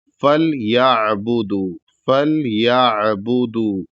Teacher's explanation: فَلْيَعْبُدُوا، یہاں پر بھی دھیان دینا ہے کہ یہاں پر یا کے بعد عین ہے، حمزہ نہیں ہے، تو اس کو حلق سے عین کو ادا کرنا ہے آرام سے کہ جھٹکا نہ ہو